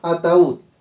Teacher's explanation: la sílaba tónica recae en la U y por lo tanto separación para el hiato